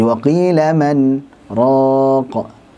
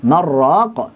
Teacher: berhenti sejenak situ tanpa mengambil nafas dan dibaca nunnya dengan jelas karena saktah